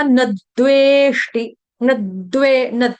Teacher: जोड़ा अक्षर है, इसलिए यहाँ पे न के ऊपर आघात आपका आ जाएगा